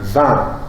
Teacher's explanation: Et encore une fois, vous pouvez constater le phénomène d'ouverture, puisque le I, qui est une voyelle très fermée, avec la nasalisation devient vin. Et donc, plus proche d'un E que d'un I. Toujours pour ce même phénomène d'ouverture que la nasalisation exerce sur la voyelle. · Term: I nasalisé